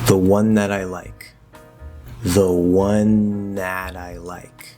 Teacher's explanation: there's no t or d sound being used at all dental or non-dental it's just an n transitioning into the next position